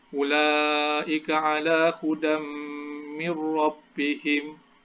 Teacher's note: Okey, yang ni idgham bila gunnah. Okey, nun mati ataupun tanwin bertemu dengan huruf ra, maka ia akan baca idgham tanpa dengung.